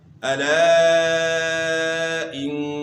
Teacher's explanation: نون مشدد میں آپ نے غنہ کرنا ہے ایک الف کی مقدار کے برابر